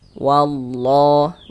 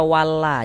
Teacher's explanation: huruf lamnya lafaz Allahnya ini kita baca tebal, kita baca tafkhim